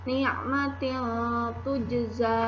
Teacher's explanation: tanwin bertemu huruf ta, maka tanwinnya terbaca samar-samar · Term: ikhfa